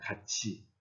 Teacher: 티읕 다음에 이 형식 형태소인 이가 왔기 때문에 t는 치로 바뀝니다. 같이 티읕이 치읒으로 바뀝니다.